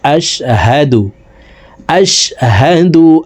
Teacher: হার উচ্চারণ হলকের শুরু থেকে পড়তে হবে